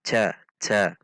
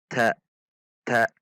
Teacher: Perhatikan juga sifat dan makhraj huruf ta. Dibaca dengan sedikit ada dorongan udara, namun tidak merubah makhraj sampai huruf c.